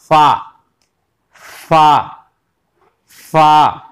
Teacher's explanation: दबाएंगे बिल्कुल नहीं, हल्के से नरमी से उसके होंठ के ऊपर अपने दांतों को रखेंगे और फिर उसको फा अदा करेंगे।